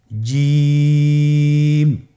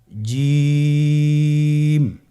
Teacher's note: আপনারা জিহ্বার মধ্যখানটা লক্ষ্য করুন এবং তার বরাবর উপরে তালুর সঙ্গে লাগান, এরপর হরফটি উচ্চারণ করুন